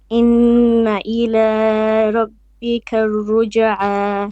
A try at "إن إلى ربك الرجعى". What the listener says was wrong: Too long on the la. 2 beats only.